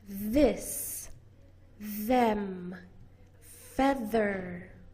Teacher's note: You put your tongue between your teeth. Your voice box is turned on, and you'll probably feel a buzz all throughout your tongue and your lips.